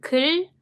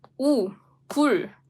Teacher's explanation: You need to kind of stretch your lips horizontally. Whereas, as for this oo vowel, you need to make your lips round. It's 굴. So not only has it to be rounded, but it also has to be like stick out, protruded.